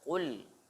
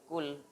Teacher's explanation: Qafnya tebal, qul, bukan kul.